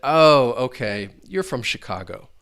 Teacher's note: and you hear that falling intonation.